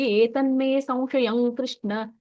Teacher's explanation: ಕ ವರ್ಗ ಇರೋದ್ರಿಂದ ಂಗ ಬರುತ್ತೆ.